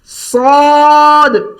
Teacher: صاد موٹی آواز ہے ایک بات, سیٹی ہے 2 بات. صاد, سواد نہ پڑھیں, واو نہ لگائیں, یعنی یہ یوں ہے, ہم اس کو یوں پڑھتے ہیں.